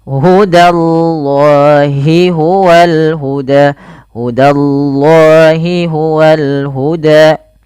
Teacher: Hudallahi danya tipis jangan langsung hudallah tapi da tipis allahnya tebal